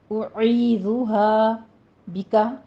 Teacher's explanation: عین وسط حلق سے ادا ہوگا